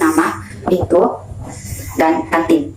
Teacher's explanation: dihasilkan dengan cara menempelkan ujung lidah pada gusi untuk menghambat udara yang dari paru-paru, kemudian udara itu dikeluarkan lewat rongga hidung. Contohnya itu dia seperti nama, itu, dan kantin. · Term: alveolar N